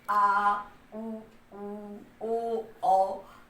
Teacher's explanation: जब हम बोलेंगे तो ये थोड़ा पीछे की तरफ से घर्षण हो रहा है, इसको हम पश्च स्वर।